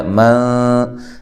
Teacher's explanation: من نون ساکنہ کا اخفا مع الغنہ ہے، باریک اخفا ہے